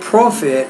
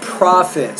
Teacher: So stress is on the first syllable, not the second syllable.